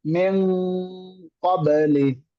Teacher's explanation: আমরা নুন না ধরে ডিরেক্ট কফে চলে যাব, আওয়াজটা ঠিক রাখবো